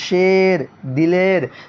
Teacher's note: یا مجہول جو یا کھینچ کر نہ پڑھی جائے, جیسے شیر, دلیر.